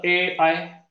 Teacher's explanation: ए आय यांचा उच्चार कंठ आणि तालू, म्हणून याला कंठ तालव्य म्हटलेलं आहे.